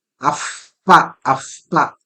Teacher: When Visarga is followed by Pakara, pa, so what happens is the Visarga converts into something called Upadmaniya.